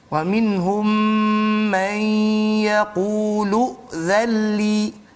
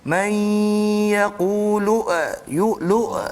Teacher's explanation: hamzah tu pertama kita kena pastikan dianya bersifat sifat jahar dia tu dan syiddah dia tu dijaga, iaitulah dengan tidak melakukan lantunan suara. Setengah orang dia baca man yaqulu yu'lu, meleret hamzah dia, ataupun macam melantun lu.